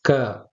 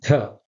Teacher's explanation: the lighter pronunciation letter K is the Alpa Prana, and the heavier pronunciation with the puff of air when you're pronouncing the letter K, that is called the Mahaprana